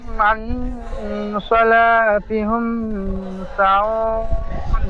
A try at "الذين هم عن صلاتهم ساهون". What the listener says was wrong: সলাতি হুম বলছেন, হুম হবে না, হিম, হা মিম সের হিম। সলাতি হিম সাহুন। সাহুন, الذين هم عن صلاتهم ساهون। ঠিক এইভাবে পড়বেন।